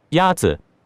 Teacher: The first tone is a high level tone.